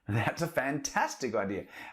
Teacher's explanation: we can put the rising intonation on fantastic